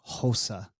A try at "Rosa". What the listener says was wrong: we roll in the r